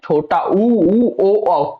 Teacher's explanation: इनको जब उच्चारण करेंगे तो ओठ एकदम गोल हो रहे होंगे और अपने क्षेत्र से बाहर निकल होंगे। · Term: वृत्ताकार